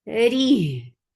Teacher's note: Ri for kasra give e sound, make ra light, but takreer will be there. The vibration does not leave ra at all.